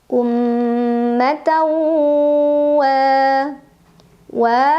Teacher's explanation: idgham bunah karena ada tanwin fathah bertemu huruf ww cara membacanya tanwin fathah dimasukkan atau dileburkan ke huruf wau sambil dengung